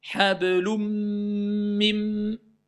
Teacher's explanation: Au lieu de dire un, je vais dire ou. Je dis quand même le ou. Et je passe au mim. · En fait, je ne prononce plus le N, mais je passe à l'autre lettre. Mais, comme je passe à l'autre lettre, je la renforce. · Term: idgham, l'assimilation